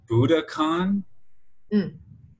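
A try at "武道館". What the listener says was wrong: Well, it's actually O, so DOKAN.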